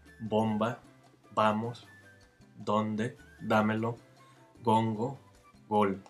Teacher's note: in initial position and after a nasal, they're pronounced as stops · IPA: [ˈbom.ba], [ˈba.mos], [ˈdon̪.de], [ˈda.me.lo], [ˈgoŋ.go], [gol]